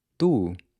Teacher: when you say the Portuguese **“tu”**, you don’t have that same puff of air